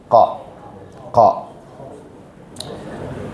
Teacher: നാവിൻ്റെ അങ്ങേയറ്റം നേരെ മുകൾ അണ്ണാക്കിനോട് ചേർത്ത് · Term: ഖാഫിന്റെ മഖ്റജ്